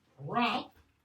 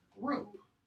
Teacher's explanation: Old English, long ah, becomes Middle English, long o, except in Northern or Scots English, okay, where it remains long ah until GVS stands for the Great Vowel Shift.